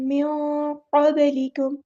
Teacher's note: नून की आवाज़ इसको छुपा देंगे, इसे कहते हैं इख़फ़ा करना, इख़फ़ा में ज़बान स्टिल नीचे रहेगी और माउथ थोड़ा-सा ओपन करना है